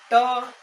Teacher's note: तो बोलिएगा ट बोलते होंगे तो जीभ कैसे मुड़ जाता होगा ना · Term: मूर्धा